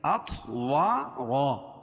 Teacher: خلقکم، میم ساکن کے بعد میم اور با کے علاوہ کوئی اور حرف آئے تو اظہار شفوی ہوگا، اس کو ظاہر کر کے پڑھیں گے اطوارا۔ طا پر قلقلہ کیونکہ یہ بھی حروف قلقلہ کے 5 حرفوں میں سے ہے اور ان پر جزم ہے تو یہاں قلقلہ ہوگا۔